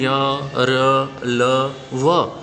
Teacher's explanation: इनमें जिह्वा पूरा स्पर्श नहीं करती, स्पर्श करते समय थोड़ा सा स्थान शेष रह जाता है। अतः ये स्वर तथा व्यंजन दोनों के बीच के वर्ण हैं, पर इनकी गणना हम व्यंजन में ही करते हैं और इन्हें अंतस्थ की संज्ञा देते हैं।